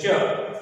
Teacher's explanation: आप जब बोलेंगे च तो आपका जीभ उस तालु में जाकर चिपक जाता है